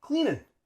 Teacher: notice how in cleaning, we drop the G. And we just use the N.